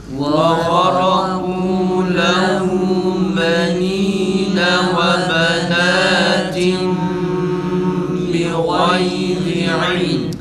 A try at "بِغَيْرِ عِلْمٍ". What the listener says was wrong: Tabii boğazdan çıkmıyor. Bi gayri, ağzınızı açın arkadaşlar. Ağzınız açılmadan bu harf güzel çıkmaz. Bi gayri ağzını açmadan kesinlikle bu harf güzel çıkmaz.